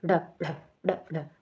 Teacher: क्योंकि जब इनका हम उच्चारण करते है ना तो जीभ एक झटके में जैसे ऐसे लगता है कि फेंक रही है इनको जैसे ड ड ड ड वो तालू को टच करके जीभ एक झटके से वापस आती है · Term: उत्क्षिप्त वर्ण